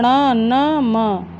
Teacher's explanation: और क में ङ और य और ण, न, म इनको अनुनासिक भी कहते हैं, क्योंकि इनका उच्चारण मुख और नासिका दोनों से होता है, इसलिए इनको अनुनासिक बोलते हैं